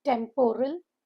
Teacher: Stress is on the first syllable.